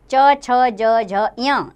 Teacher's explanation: ये तालु से बोले जाते हैं, तालु को स्पर्श करते हैं। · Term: च वर्ग